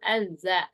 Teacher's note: for the zal also azza, tip of the tongue will be out of the lips